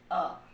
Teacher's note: अ, बोलिए, जीभ जो है वो बीच में रहती है। अ, ये मध्य स्वर हो गया।